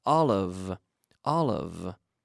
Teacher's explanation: But the V, we have to vocalize the V.